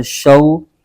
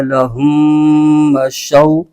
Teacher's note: واو ساکن سے پہلے زبر آ جائے تو واو لین ہوتا ہے، اس کو بغیر کھینچے پڑھتے ہیں۔